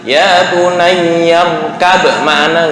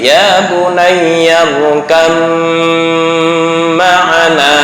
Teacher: Ini gerakan bibir. Nah, ketika ba sukun bertemu dengan mim hidup, maka diidghamkan ke mim.